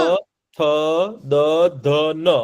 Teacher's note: આ બધા અક્ષર બોલશો ને જ્યારે ત્યારે તમારા દાંતની પાછળ છે ને તમારી જીભ હશે